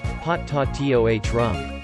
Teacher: Potatorum is pronounced with the accent on the third syllable, i.e., pot-ta-toh rum.